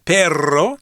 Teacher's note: the word for dog, perro, has the rolled R. So maybe if you whistle like this, let me see if I can do it, then that would imitate the R sound in Espanol.